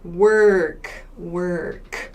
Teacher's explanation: in American English, work, there's a clear R sound, and this O is pronounced work, work.